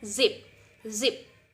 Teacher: we will feel like there's a vibrate on our vocal folds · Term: voiced consonants